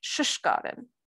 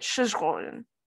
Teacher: an epenthetic u is inserted, and that u is always inserted directly following the preverb sh. So in a word like skaren, which is to investigate, you would get shishkaren with the u following the first preverb sh.